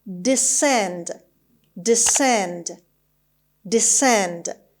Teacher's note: this is a verb and the stress is on the second syllable